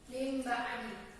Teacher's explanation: Dasar dari bacaan iklab ini adalah ketika ada nun sukun atau tanwin bertemu dengan huruf ba. Adapun cara membacanya dengan mengganti huruf nun sukun atau tanwin dengan huruf suara mim karena bertemu dengan huruf ba